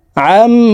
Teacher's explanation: তিন আলিফ নিয়ে নুনকে সাকিন করতে হবে কারণ মদের হরফের বামের হরফে হইলে মুদ্দা আরজি তিন আলিফটা নিয়ে